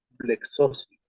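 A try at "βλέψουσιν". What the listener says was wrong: Blepsosin. ¿Verdad que es una psi, no? Es una psi, ¿cierto? Con la que estamos componiendo esa fusión.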